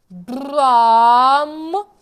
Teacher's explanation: м має бути дзвінка чітка резонуюча на губах тобто губи відчувають вібрацію звуку